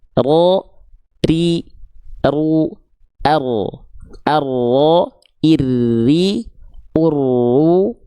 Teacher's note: huruf ro tidak menuntut banyak getaran ketika dilafalkan karena sifatnya adalah takrir.